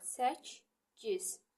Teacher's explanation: Qoşa k-lərdən birincisi olduğu kimi qalır, ikincisi çevrilir g-ya, qarşılığına çevrilir.